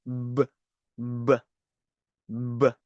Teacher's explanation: So instead of pronouncing ba, you say bb. Okay, you have a little vibration from the vocal cord. So B that is what it means by a voiced consonant and it is unaspirated meaning you can't feel a very strong puff of air coming through. · So instead of pronouncing ba, you say b, b, b. Okay, you have a little vibration from a vocal cord